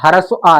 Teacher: मध्य स्वर में हमारा सिर्फ ह्रस्व आ है जिसका उच्चारण करते समय जीभ का मध्य भाग प्रयोग में आता है।